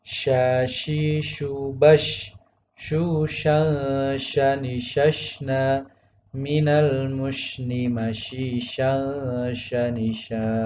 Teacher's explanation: tidak memonyongkan bibir atau membulatkan bibir ketika membaca shin